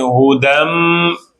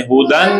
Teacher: دال میم سے مل رہا ہے نا تو میم کی آواز دیں. ہدن نہیں. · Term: غنہ